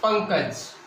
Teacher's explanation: अनुस्वार को जब हम सीखते हैं तो ये अंग की ध्वनि जो हमारी है वो अनुस्वार है और इसका उच्चारण नाक से किया जाता है